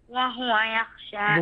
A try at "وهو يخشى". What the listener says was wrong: ضم الهاء جيدا، ضم الهاء، وهو يخشى.